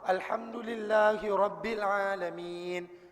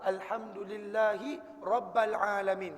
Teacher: ba yang sepatutnya berbaris bawah dibaca dengan baris atas